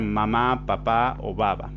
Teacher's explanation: sonidos labiales cuando se juntan o aproximan los labios